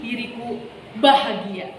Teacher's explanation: kini diriku bahagia berarti ditekankannya pada kata bahagia misalnya seperti ini diriku bahagia gitu ya jadi ada penekanan di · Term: tekanan dinamik